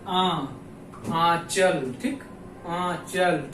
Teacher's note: तो उच्चारण में वायु पे हम लोग देखते हैं, जैसे कि अनुनासिक, अनुनासिक, अब देखो बोलने में अनुनासिक मतलब नाक पे जोर पड़ रहा है, अनुनासिक यानी कि वायु जो है मुख व नाक दोनों से निकले और चंद्र बिंदु लगाओ, मतलब कि जब हम किसी शब्द को बोले तो उसमें जो है नाक और मुख दोनों से वायु निकले और चंद्र बिंदु लगाओ, जैसे आ चल, ठीक, आ चल, ठीक।